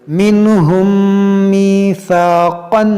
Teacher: میم ساکن کے بعد دوسری میم ہے تو یہاں پر ادغام شفوی کریں گے، یعنی کہ غنہ کریں گے